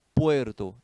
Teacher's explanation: eu tenho uma fraca que é o u e e que é a forte Puerto aqui é um ditongo